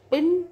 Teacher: पी in English is रिलाइज differently in these two different words the sound in the beginning of the syllable is usually एस्पिरेटर